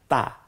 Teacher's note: দুইটা একটা হলো তা এটা বলার সময় মুখটা ফাঁকা হয়ে যাবে জিহ্বার আগা দাঁতের গোড়ার দিকে চলে যাবে সামনের দাঁতের